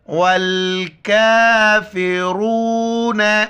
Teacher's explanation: کاف کے اوپر کڑا زبر ہے، ایک الف کی مقدار کھینچنا ہے ، واو کو لام کے ساتھ ملائیں گے، را کو موٹا